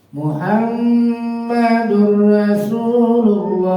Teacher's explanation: tanwin bertemu ro masukkan bunyi tanwin ke dalam huruf ro tanpa ditahan tanpa didengung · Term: idgham lilagunah, idgham bila gunnah